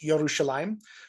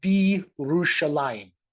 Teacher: The bet means in, and Jerusalem on its own would be pronounced Yerushalayim. But when you put this preposition on the front here with a word that begins at a yod, it kind of all slides together, and this becomes Birushalayim.